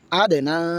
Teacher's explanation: হামজাদাল জবর আদ, নুন খাড়া জবর না, এক আলিফ টান হবে